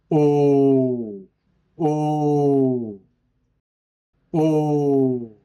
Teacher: O has long sound. Keep your mouth still in O shape while you pronounce this vowel. You feel vibration inside your mouth.